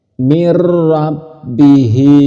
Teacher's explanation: nun mati ataupun tanwin masuk ke ro atau masuk ke lam itu tidak berdengung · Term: Idam bilunah